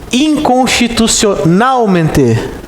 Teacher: qual é a sílaba tônica? Men, ou seja, a penúltima sílaba